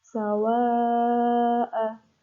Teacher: ada mad wajib mutasil, panjangnya 6 harokat.